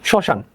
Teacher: শব্দের শুরুতে মফলার কোনো উচ্চারণ হয় না